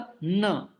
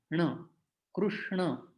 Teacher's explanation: ट वर्ग का ण है उसमें जिह्वा पीछे चली जानी चाहिए मूर्धा के रूप में, ण। और ये है दंत न, तो दांतों को जिह्वा स्पर्श होने चाहिए न।